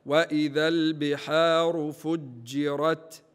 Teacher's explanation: الجيم شديده لابد من بيان الشده متاعها · فجرت الجيم شديدة لابد من بيان الشدة امتاحة هكذا، وإذا البحار فجرت، فجرت الجيم من وسط اللسان مع ما يقابلها من الحنك الأعلى للفم. · الراء متحركه ايضا بالفتح لابد من تفخيمها · التا في اخر الكلمه مهموسه